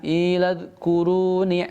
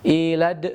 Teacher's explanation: Dal di sini tidak boleh dipantul. Ini bukan dal huruf qalqalah ya. Maka ditahan iladhkuru dan tidak boleh begini ilad, nggak boleh ya, tapi ditahan iladhkuru ni'mati allati.